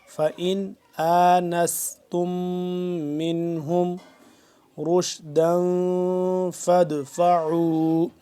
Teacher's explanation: اب نون ساکن ہے لیکن اخفا نہیں کریں گے, نا کے اندر نہیں لے کے جا کے پڑھیں گے. وجہ اس کی یہ ہے کہ اس کے بعد یہ حروف ہلکی کا حمزہ ہے.